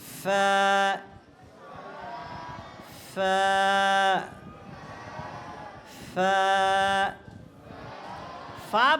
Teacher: ফা বলার সময় শুদ্ধ উচ্চারণ হলো উপরের দাঁত নিচের ঠোঁটের সাথে লাগাতে হবে উপরের দুইটা দাঁত কোথায় লাগাইতে হবে নিচের ঠোঁটের সাথে লাগিয়ে এরপরে